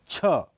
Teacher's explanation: रगड़ होती है इसलिए इन्हें स्पर्श संघर्षी कहा जाता है छ यह महाप्राण अघोष ध्वनि है · यह महाप्राण अघोष ध्वनि है। इसका उच्चारण स्थान अग्रतालु स्पर्श संघर्षी है। शब्द के अंत में छ बोलते हुए इसका प्राणत्व कुछ कम हो जाता है।